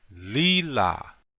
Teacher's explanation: notice the accent is on the first syllable